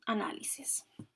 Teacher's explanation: ejemplo cárcel y luego están las palabras esdrújulas o sobreesdrújulas que tienen la fuerza de la pronunciación en la antepenúltima sílaba o antes de esta sílaba y estas siempre se acentúan por